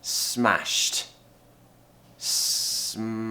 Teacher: You're ending that sound, the sh sound, with a very quick t. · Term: consonant cluster